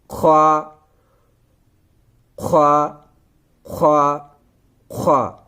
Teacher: خوا خوا خوا خوا خوا کا مخارج یہی ہے، حلق کا اوپری حصہ، حلق کے اوپر والے حصے سے ہمیں خوا کو ادا کرنا ہے۔